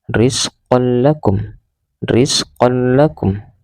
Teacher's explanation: qon bertemu dengan lam, qalla, rizqan lakum, membacanya tanpa dengung